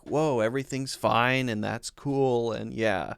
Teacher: everything he says kind of has a slightly upward inflection when he talks